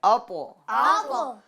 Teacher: اس کے اندر قلقلہ کریں گے طا کی آواز کو لوٹائیں گے